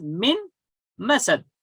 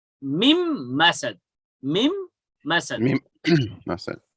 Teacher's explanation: Because after if nun sakin or tanween are followed by any of the idgham letter, so you will have to merge. You will have to enter a sakin letter into a mutaharrik one. I mean, nun sakin will be entered into mim. It will be mim masad.